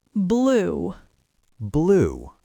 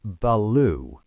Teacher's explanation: It's not beloo. The B and L are a single explosive event.